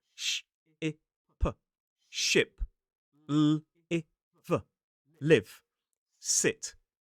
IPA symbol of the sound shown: ɪ